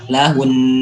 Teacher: Ketika huruf nunnya mati, jangan cuma kita baca lahun biasa, tapi kita tahan tetap lahun. tapi nggak dilepas, ditahan.